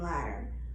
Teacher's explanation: you can't really hear the D in ladder